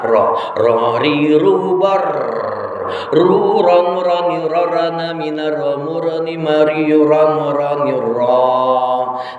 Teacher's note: Sifatul huruf ro at-takrir, ada getaran.